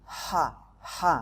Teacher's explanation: Hirroh, nah haknya hati-hati, haknya hak kecil. Hak ini makhrajnya ada di tengah tenggorokan ya, jadi lidahnya ada di tengah-tengah